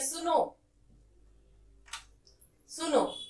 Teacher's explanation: प्लुत स्वर होता है जब हम किसी को बुलाते हैं, इसमें 3 मात्राओं का प्रयोग होता है